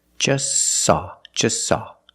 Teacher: You link the S with the S. Link them together. · We see the T is between consonants, so don't pronounce it. It's silent. Just saw. You link the S with the S.